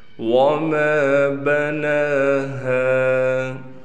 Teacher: نون پر کڑا زبر ہونے کی وجہ سے اس نون کو ایک الف کے برابر کھینچیں گے